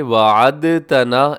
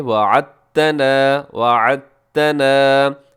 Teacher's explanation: عین کو تا کے ساتھ ملانا ہے، اور دال کو اس میں آپ نہیں پڑھیں گے